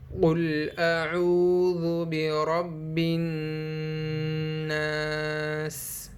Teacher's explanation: قل میں قاف کو ہم پر پڑھیں گے یعنی موٹا پڑھیں گے۔ اعوذ میں ہم حمزہ اور عین کو صاف ظاہر کریں گے اور ذال کو بالکل بھی نہیں کھینچیں گے، اور یہاں پر را کو ہم موٹا پڑھیں گے یعنی پر پڑھیں گے کیونکہ اس پر زبر ہے۔